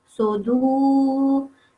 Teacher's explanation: The reason being, it's a waw of elongation. The waw and the dhamma come together, so they make a team. They team up and they prolong it for 2 seconds.